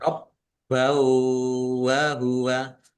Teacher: Rob, bawa, baknya dibaca double, ada tasdidnya, ditekan dan ditahan biar tampak double. Fathah tanwin bertemu dengan huruf wau, bacaan idgham bi gunnah, masuk dengan mendengung, yaitu mendengung wau, ditandai wawunya ada tasdidnya.